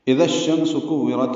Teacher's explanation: حمزہ کو اقصی حلق سے بالجہر ادا کریں گے اور جلدی اور معروف پڑھیں گے۔ دال کو نرمی سے پڑھیں گے، اذا اور الشمس ملا دیں گے، اذا الشمس ہو جائے گا، ادغام شمسی ہے۔